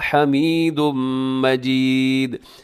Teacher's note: آخر میں دال کو آپ نے قلقلہ کرنا